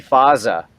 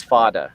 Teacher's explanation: says fada right so it's more of a more of a a tap as opposed to a fricative